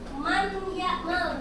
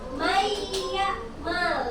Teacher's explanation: Jadi nun matinya tidak dibaca terlebih dahulu. Jadi bukan man ya mal, bukan. · Nunnya tidak dibaca tetapi langsung masuk ke huruf ya. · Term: idgham